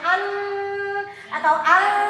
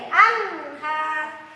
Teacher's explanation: Di sini huruf izharnya adalah ha, anhar. Maka nunnya dibaca jelas karena nun mati bertemu ha, ya, termasuk huruf izhar. Anhar, jangan an atau al, jangan.